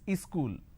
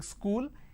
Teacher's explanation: two syllables school but in in places like up bihar jharkhand they add another syllable they pronounce this as ischool wherever there is a word that starts with the sir sound